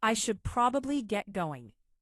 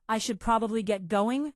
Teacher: Hear how going falls in pitch? That's conclusive. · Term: falling intonation